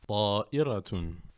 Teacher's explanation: j'appuie le bout de la langue contre la racine des incisives supérieures et je sors le son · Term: la lettre Bra